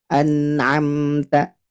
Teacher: Jadi biar tidak terpantul itu, jangan dilepaskan lidahnya Bu ketika membaca huruf nunnya. Nah, tidak boleh ane. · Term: nun sukun